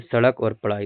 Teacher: द्विगण या उत्क्षिप्त व्यंजन इनके उच्चारण में जीभ झटके से नीचे गिरती है